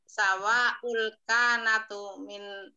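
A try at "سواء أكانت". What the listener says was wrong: akanat iya akanat jangan kanatu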